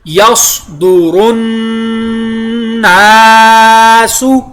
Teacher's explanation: یصدر الناس، صاد پر ادا ہوا، آگے نون شدہ کی وجہ سے لازماً غنہ، نون کے ساتھ الف مدہ، ٹھیک ہے جی۔